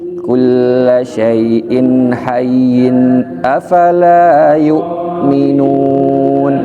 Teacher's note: Seperti afala yu'minun, itu harus ditinggikan nadanya